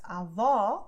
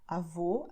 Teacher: Because AVÓ, I'm opening my mouth. AVÔ, I am closing it.